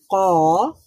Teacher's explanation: তাহলে এখানে দেখেন উপরের তালুর সাথে কফ উচ্চারিত হয়, জিহ্বার গোড়া উপরের তালুর সাথে লাগিয়ে উচ্চারিত হয় কফ